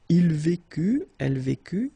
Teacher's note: final T not pronounced